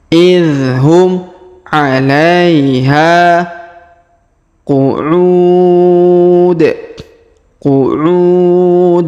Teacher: Huruf ha kita panjangkan ini huruf ha dua harakat karena di depannya terdapat Alif